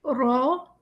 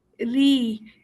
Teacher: را کو تھوڑا سا موٹا پڑا اور ری میں ہم نے آواز کو باریک کر دیا